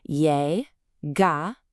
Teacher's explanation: That double L sound in a lot of Spanish dialects, it sounds just like the Y in the English word yes.